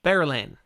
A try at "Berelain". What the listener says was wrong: Really? You say that one with only 2 syllables?